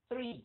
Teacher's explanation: Mình le lưỡi, mình đánh cái âm TH and R